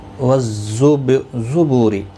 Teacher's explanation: را زیر کی وجہ سے باریک پڑھا جائے گا